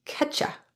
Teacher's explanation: even in more reduced forms, the word you can sound like just the schwa sound. Ah. The result is that catch you can sound like catcha.